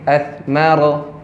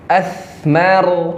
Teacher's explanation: Sa itu cara pelafasannya harus dialirkan ketika sukun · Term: rokhawah